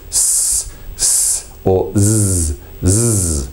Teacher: it happens primarily on the blade just behind the tip of the tongue